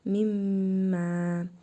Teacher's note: Nun hərfini burnumuzda tələffüz edərək bir əlif miqdarı uzadırıq. Mim hərfini isə şəddə verərək oxuyuruq. Mimmə. Mim hərfində həmçinin hərfi məd var. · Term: idğamı məal qunnə